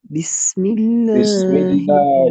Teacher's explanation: بسم اللہ میں باریک پڑھا جائے گا کیونکہ اس سے پہلے زیر ہے